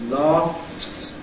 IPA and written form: lɑːfs (laughs)